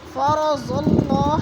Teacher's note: فرض اللہ کی اللہ بھی پر پڑھی جائے گی کیونکہ اللہ سے پہلے صاد کے اوپر زبر ہے تو اللہ کو پر کر کے پڑھیں گے